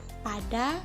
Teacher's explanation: bunyi P seperti pada kata pada yang dihasilkan dengan menutup bibir